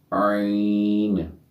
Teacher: عین، وسط حلق سے ادا کریں گے